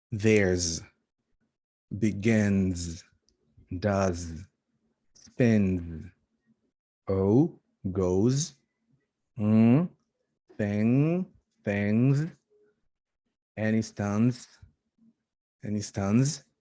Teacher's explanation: All of them produce a vibration. So they have a voice, and hence we use the z ending.